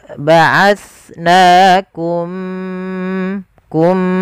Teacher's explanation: mimnya masukkan ke huruf mim kedua dan ditahan gunnahnya. Ya, ba'atsnakum, kum, dan bibir kita rapatkan. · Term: Idgham mimi